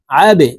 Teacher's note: এই আইনকে হলকের মধ্যখান থেকে চাপ দিয়ে উচ্চারণ করব।